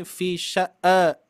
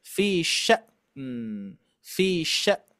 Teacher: hati-hati dengan pengucapan hamzah ya. Jangan sampai kita memantulkan hamzah dulu ya. Jangan sampai fi sya'a tapi fi sya'.